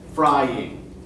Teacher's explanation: fry is the syllable that we pronounce more clearly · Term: stressed syllables